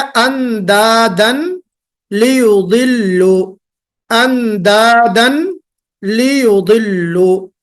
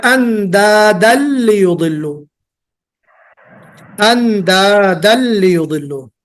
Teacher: ये जो तनवीन का साउंड है ये मर्ज हो जाएगा